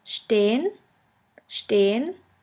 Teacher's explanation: The next letter combination is SP, SP, ST, ST, which is pronounced like the letter combination SHP and SHT.